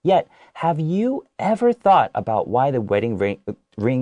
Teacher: My way of doing it is I emphasize, you ever thought, okay?